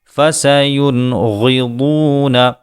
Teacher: یہاں نون کو بھی ظاہر کیا گیا ہے، نون کا اخفاء نہیں کیا گیا ہے بلکہ اظہار کیا گیا ہے، کیونکہ نون کے بعد غین حروف حلقی میں شمار ہوتا ہے۔ غین اور ضاد دونوں ہی پر حروف میں آتے ہیں، ان کو پر کریں۔